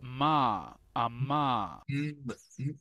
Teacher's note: es un sonido bilabial que se hace entre los labios